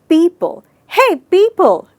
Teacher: मैंने पीपल यानी पी वाले सिलेबस पे ज़्यादा स्ट्रेस दिया और पल को आराम से बोला।